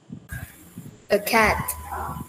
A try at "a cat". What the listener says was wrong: Tốt, phát âm tốt đấy.